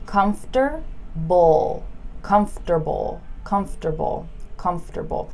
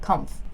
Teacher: the M and the F just get squished together